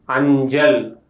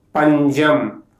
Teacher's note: The sound ja is called voiced palatal affricate. To pronounce the sound, the tongue is placed in the hard palate, the air is blocked and then releases suddenly.